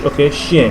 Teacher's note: whenever we have ch, it's pronounced as sh, not ch, because there is no such sound as ch in French. So it always sounds like sh, even if you see ch, it's sh.